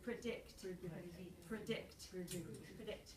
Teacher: It's more about predict, because you're heading toward the second syllable, so you don't put a lot of stress on the vowel on the first one. So it's predict, predict, predict.